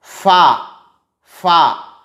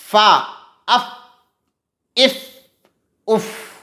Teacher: اس کو ادا کرتے ہوئے آواز جاری رہے گی، آواز بند نہیں ہونی چاہیے